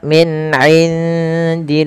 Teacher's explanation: di sini suara nunnya disamarkan ke huruf dal karena ia ada bacaan ada bacaan ikhfa, yang mana ikhfa itu cara membaca antara izhar dan idgham.